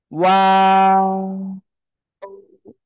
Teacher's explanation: এই যে দুই ঠোঁট, দুই ঠোঁট গোল করবেন শুরুতে, আবার মাঝখানের দিকে এরকম চলে যাবে, দুই ঠোঁট দুই দিকে। আবার শেষে এসে গোল।